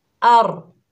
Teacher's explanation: रॉ को पुर पढ़ेंगे, पुर से मुराद मोटा पढ़ेंगे क्योंकि इससे पहले ज़बर है। तो कैसे पढ़ेंगे, अर नहीं पढ़ना, और।